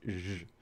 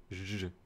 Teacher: And the other symbol, ej, would be a zh. So this is the counterpart to sh with some vocal vibrations